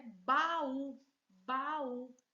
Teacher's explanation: Vejam que elas se separam. Esse encontro vocálico separou, então temos hiato.